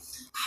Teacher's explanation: हा है हमारा हलक़ वाला लफ्ज़, यानी वस्तुल हलक़ से निकलता है